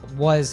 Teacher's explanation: was has that schwa sound, so it's also a reduced word